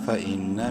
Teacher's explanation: فا زبر فا حمزہ نون زیر ان نون مشدد ہے غنہ کریں گے